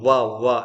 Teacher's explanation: और वकार यानी व का क्या है? दंत और ओष्ठ है